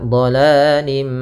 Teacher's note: sambil ditahan suara mimnya, gunnahnya 2 harokat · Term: idgham naqis